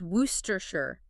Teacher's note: It's due to a historical sound change called elision, which is quite common in historical English place names. Multiple unstressed consonants just disappear, and vowels reduce right down to the schwa sound, that ooh sound. · it collapses into just 3 short, heavily reduced syllables